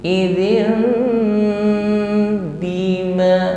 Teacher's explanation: Jadi, di sinilah hukum iqlab berlaku . Jadi, idin kasrah tanwin langsung diganti dengan mim. IM langsung bersenandung pada huruf mim.